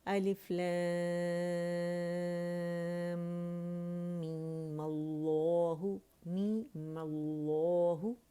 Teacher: میم اللہ، ٹھیک ہے، اور 2 کاؤنٹ ہم نے لاسٹ میں جو میم تھا بجائے 6 کرنے کے اسے صرف 2 کاؤنٹس پڑھا ، مد اصلی بنایا اور اس کی ساکن کو ہم نے